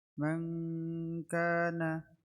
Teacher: نون ساكنة مخفى عند الكاف المفتوحة بغنة حركتين